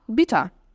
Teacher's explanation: Percebe que o ER no final tem som de A